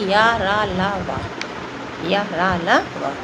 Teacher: जीभ पूरी तरीके से किसी भी मुख के किसी विभाग को स्पर्श नहीं करती है। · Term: अंतस्थ व्यंजन